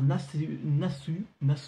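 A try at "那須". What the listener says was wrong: En fait on le prononce à peine donc ça fait Nassé.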